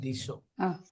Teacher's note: ఇక్కడ దిశో అని కాకుండా దిశో తాళవ్య సకారం. దిశో దిశో దంత్య సకారం కాదు. అంటే సరిగమల్లో ఉండే సకారం కాకుండా శంకరాచార్య సకారం.